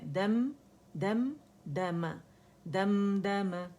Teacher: اور میم پہ ایک کاؤنٹ کے لیے ہم نے رکنا ہے